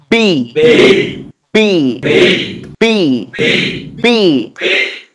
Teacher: কিভাবে বলবো, দুই ঠোঁট চাপ দিয়ে ধরবো, তারপর ঠুস করে ছেড়ে দেবো।